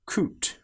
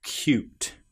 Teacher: we get the sound of the y before the vowel and after the very first consonant, hence cute.